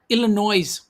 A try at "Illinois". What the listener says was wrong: Illinois. Illinois. No S. S. You don't say the S.